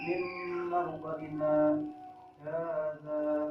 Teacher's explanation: berhenti sejenak sekedar satu alif dan tidak boleh mengambil nafas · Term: saktah